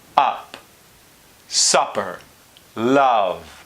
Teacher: theoretically this uh sound happens way in the back up supper love so it's not very far from the vowel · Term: turned V